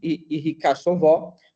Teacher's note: o acento principal recai na primeira sílaba e o acento de segunda posição na segunda sílaba